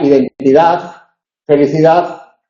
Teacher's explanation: interdentalizaba y ensordecía las consonantes sonoras en posición final